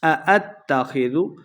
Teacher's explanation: 2 حمزہ ہیں، لمبا بالکل نہیں کرنا، تا مشدد ہے، حمزہ کو تا کے ساتھ ملانا ہے